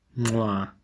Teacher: for the bilabial click, nasalization is done with an M.